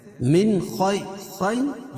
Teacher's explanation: خیر یعلین ہے، اس کو نرم آواز کے ساتھ جلدی ادا کریں گے اور خا کو پور پڑھیں گے، اور را باریک پڑھی جائے گی، کیوں؟